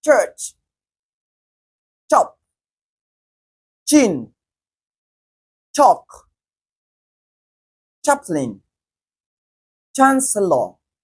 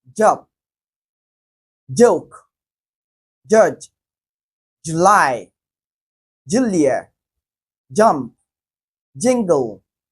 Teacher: ch is voiceless whereas J is voiced